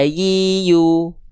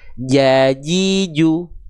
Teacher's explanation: huruf ya itu cukup tengah lidahnya diangkat sampai mengarah ke langit-langit. Ya, kalau huruf jim nempel sampai ke langit-langit.